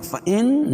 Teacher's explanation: فإن نون مشدد ہے، اس میں غنہ ہوگا